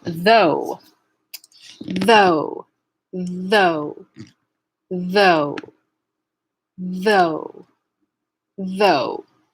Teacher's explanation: though which is voiced the entire way through